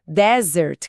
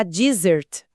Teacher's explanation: Desert, que é o deserto de areia, tem a força no começo, um som mais seco. Já desert, a sobremesa com dois Ss, empurra o acento lá pro final e o S vibra com som de Z.